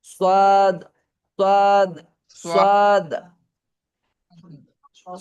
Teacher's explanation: সোয়াদ সোয়াদটা কোথায় সোয়াদ পড়বেন আমি বলি যেখান থেকে সিন পড়েছেন, যেখান থেকে যা পড়েছেন সেখান থেকে সোয়াদটা পড়েন, নিচের দাঁত, নিচের দাঁতের গোড়ার সাথে টাচ লাগিয়ে মোটা করে বলেন